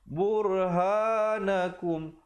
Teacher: Burhanakum, ra di situ menjadi tebal.